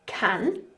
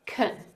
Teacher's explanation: with the word can, we have can with the ah sound, but we also have kun with the schwa sound, and this is a weak form.